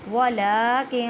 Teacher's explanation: نون ساکن کے بعد کاف ہے، اخفا کریں